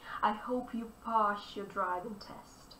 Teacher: the sound s mingles with the sound y together they combine the sound s-a-h s-h-h to be more specific for example we